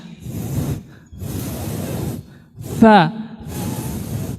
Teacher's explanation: Huruf sa nggak ada desisnya. Jadi bukan sa, sa salah sa, tapi sa. · Dia hanya ada anginnya, ada hamesnya. Sa, angin saja.